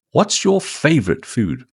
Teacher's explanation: Stress favorite and keep food short.